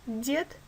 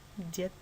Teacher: Д – звонкий Д – дед или глухой Т – дед.